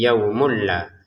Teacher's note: Jadi kita masukkan tanwinnya ke lam terbacanya yaumul la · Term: tanpa dengung